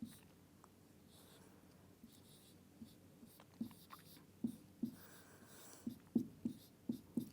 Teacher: the second part of the word is stressed and the first part is not